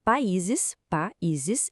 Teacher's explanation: O acento está ali por causa do iato. O i é tônico, fica sozinho na sílaba separado do a.